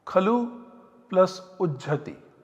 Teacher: U + U both short as input and 6110 1 applies and the output generated is long u